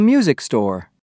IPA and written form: ˈmyuzɪk stɔr (music store)